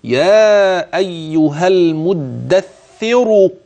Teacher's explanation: انني حينما وقفت رققت الراء المدثر انما حينما وصلت نظرا لان حركتها هي الضم اصبحت مفخمه فاحفظ